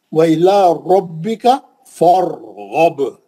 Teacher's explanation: را ساکن ہے تو ہم پہلے والے کو دیکھیں، الف بھی خالی تھا، پھر فا کو دیکھیں، فا پہ زبر ہے، را موٹی ہو گئی. وَإِلَىٰ رَبِّكَ فَارْغَب.